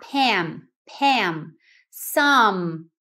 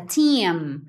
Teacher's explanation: Som do M, você fecha a boca, principalmente no final de palavras